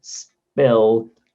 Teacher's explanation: if we put an s before spill lots of people don't add that air